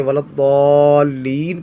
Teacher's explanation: یہاں پر مد لازم بھی ہے کیونکہ سکون اصلی ہے، اور آگے ولضالین یہ گول دارہ ہے. جب اس کو وقف کریں گے ولضالین پڑھیں گے تو مد عارض بھی ہے، کیونکہ حروف مدہ کے بعد سکون عارضی ہے، نون کو ساکن کیا گیا ہے وقف کی وجہ سے، سکون عارضی ہے.